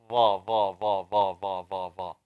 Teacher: Tip of the tongue touching the upper teeth.